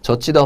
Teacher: 젖히다 보면 지읒과 히읗이 만나서 치읓이 되는 거죠. 그러니까 두 개의 자음이 만나서 하나의 자음으로 줄어들었죠. · 예사소리가 히읗과 만나서 거센 소리가 됐을 때 그걸 바로 자음 축약이라고 하는 거죠